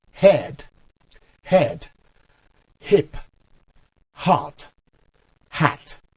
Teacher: the letter h which is pronounced as ha is called the glottal fricative because it said in the glottis i don't want to complicate